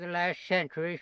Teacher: he's dropping the T there, which is common.